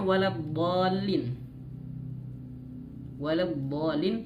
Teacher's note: istidalah itu memanjangkan makhraj huruf dod. Jadi ada suaranya mengalir gitu. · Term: istitalah